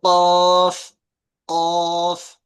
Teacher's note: জিহ্বার গোড়া এবং সেই বরাবর উপরের তালু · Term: কফের মাখরাজ